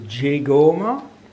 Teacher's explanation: So to keep it all together, you have to assume that there was first a form gegoma. Now, because of the influence of the A on the initial G, this becomes jegoma